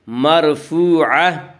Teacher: جب وقف کریں گے تو گول تا وقف کی صورت میں ہائے ساکنہ بن جاتی ہے